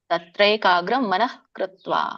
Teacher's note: ವಿಸರ್ಗ ಮಧ್ಯದಲ್ಲಿ ಪೂರ್ಣ ಉಚ್ಚಾರಣೆ ಮಾಡಬಾರದು